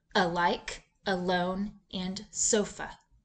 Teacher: the vowel a in an open unaccented syllable is pronounced uh as in alike alone and sofa